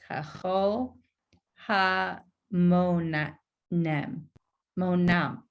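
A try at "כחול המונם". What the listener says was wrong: Perfect. That's exactly it. That's it.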